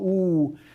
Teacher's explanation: If you think back, way, way back, months ago when you were young and carefree and knew a lot about phonology and had not yet encountered, you know, syntax and semantics, maybe you remember that the vowel oo has rounding, right? Your lips are rounding, but it's also high and back, right? What that means is that your tongue is bunched up toward the top of the back of your mouth, right?